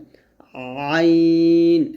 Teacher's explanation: আইনটা গলার মাঝখান থেকে চাপ দিয়ে চিকন করে বলতে হবে